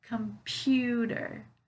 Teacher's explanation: you hear where the stress is is it the first syllable second or third it's the second syllable